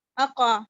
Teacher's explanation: میں نے حمزہ کے فتح کو میں نے قاف کے فتح میں ملنے نہیں دیا، میں نے اس کو مرج نہیں کیا، میں نے اس کو مجہول نہیں کیا، معروف کیا ہے.